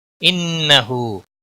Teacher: انه نون مشدد پر غنہ ہوگا